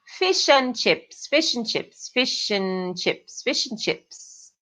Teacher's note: de N só, não and. Fala n.